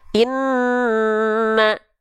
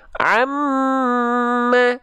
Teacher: Nun dan mim ketika bertasdid karena dia ada hukum gunah maka dia ditahan dua harakat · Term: ghunah